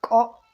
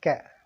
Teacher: ایک کو عام طور پر کینچی والا کاف موٹا جس کے اوپر دو نقطے ہوتے ہیں، اس کو موٹا کاف کہتے ہیں. تو اس کو کا موٹا کر کے کا. دوسرا جو ہے وہ باریک ہوتا ہے